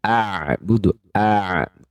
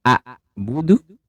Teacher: hamzah Jadi sifat Hamzah dan Ain sama-sama jahar tib kemudian ha Ain dari sisi suaranya dia sedikit mengalir teman-teman disebut dengan tawassut ya sedikit mengalir sedangkan Hamzah itu disebut dengan syiddah atau suaranya tertahan